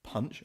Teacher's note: that plosive p sound at the beginning